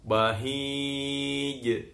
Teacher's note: dia kalau sukun ada sifat kolkolanya, terpantul bahij. Tapi jangan berdesis, yang bahij.